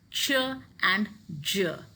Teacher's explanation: these affricates are combination of a stop followed by a fricative so in affricates you're going to see that air is blocked · by a fricative so in affricates you're going to see that air is blocked in the mouth but it's also coming out with lot of friction · an explosion with a slow release